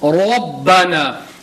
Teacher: And when we say Rabbana, if you can see there is a zabar, there is a fatha on the ra. So instead of reading it Rabbana, Rabbana, read it with a full mouth